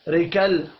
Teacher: را کو زیر کی وجہ سے باریک پڑھنا ہے، لام ساکن پر قلقلہ نہیں کرنا